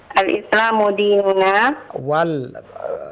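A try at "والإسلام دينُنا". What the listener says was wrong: ada waw di situ. Wal Islamu. Wow, tertinggal.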